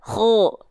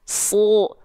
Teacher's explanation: Tapi dia dibaca kho. Dibaca dengan vokal O. Kenapa? Karena dia huruf tebal.